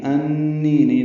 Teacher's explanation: نون مشدد پہ غنہ ہے اور نی یا مدہ ہے، 2 حرکات لمبا ہے